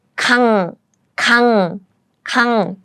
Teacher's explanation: When it's used at the beginning of the syllable, then it has no sound. When it's used as a 받침, as a final consonant, then it sounds like ng. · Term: ng sound